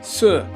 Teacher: Okay, so this character is se, with the falling tone, which is 4.